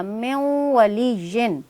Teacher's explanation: یہ لکھنے میں میم زیر نون من ہے، لیکن چونکہ نون ساکن کے بعد واو حروف یرمالون میں سے موجود ہے تو نون ساکن نون تنوین کا قاعدہ یہ ہے، اصول یہ ہے کہ یہاں پر ادغام مع الغنہ کیا جائے گا، اسے مکمل طور پر ملا دیا جائے گا